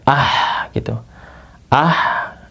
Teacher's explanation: Nah, kalau dia sukun jadi ah nih ada itu desahannya ya. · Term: bunyi ha ketika sukun